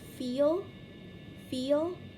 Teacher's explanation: bringing the top teeth into contact with the bottom lip and forcing air between the two to create fricatives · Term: labiodental